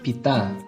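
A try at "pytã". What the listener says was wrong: Aí tem que nasalizar no final.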